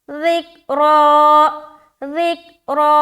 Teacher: रा को मोटा रख रहे, और जब हम ज़ाल को काफ में मिलाएंगे आवाज़ स्टक हो जाएगी, लौटती हुई मालूम ना हो।